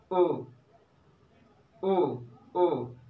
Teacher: मतलब आधा मुंह भी नहीं खुला, आधे से भी कम खुला तब भी ये आपका उच्चारण हो गया ओ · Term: समविवृत